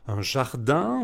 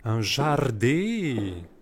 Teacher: on ne nasalisait pas les en, les un, les on, on ne disait pas un jardin, mais un jardé.